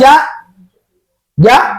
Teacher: jim itu ataupun ja adalah dari tengah-tengah lidah sama dengan huruf ya sya dibengkokkan tengah lidahnya.